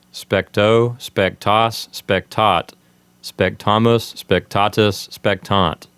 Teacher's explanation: So we didn't really pronounce those words technically correct, but we put the emphasis on the endings to help us remember the different verb endings